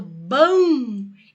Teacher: esse m tem som de u É como se eu falasse bom com u